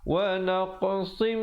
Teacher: idgham bi gunnah, sad tanwin 2 di bawah bertemu mim 2 harakat.